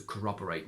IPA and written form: kə'rɒbəreɪt (CORROBORATE)